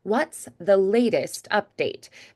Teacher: So you could do latest like a D instead.